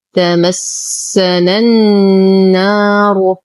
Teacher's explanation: ننتقل من فتحة النون إلى تجديد النون في كلمة النار حرف المد يسقط بسبب التقاء الساكنين، الساكن الأول هو حرف المد والساكن الثاني بداية التشديد في حرف النون. همزة الوصل تسقط في در الكلام، واللام شمسية مدغمة بالنون، فنقول تمسنا النار.